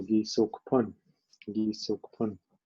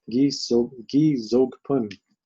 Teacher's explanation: after you see this word gi, usually the vowel behind or the consonant behind it will change from soft to hard